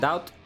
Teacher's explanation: A silent B in the doubt. So doubt? And stop the T sound short.